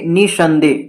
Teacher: तो नी पर ज्यादा जोर लगाना पड़ा, अतः इन्हीं वर्णों पर बलाघात माना जाएगा।